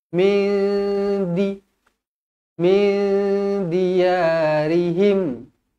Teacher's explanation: nun kosong bertemu dengan dal ikhfa hakiki dengung dua harokat